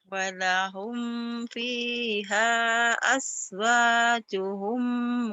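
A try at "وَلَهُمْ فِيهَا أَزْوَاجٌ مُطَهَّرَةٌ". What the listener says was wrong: azwajuhum, nggak ada humnya.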